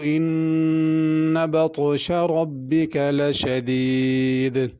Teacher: بطشہ میں طا پر پڑھنا ہے، طا ہے، تا نہیں پڑھنا